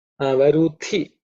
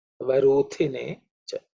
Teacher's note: So the tongue should be raised up, just the way it's ta ta da da na, same position. Varuthi, thi again is aspirated because it's the second letter in the ta varga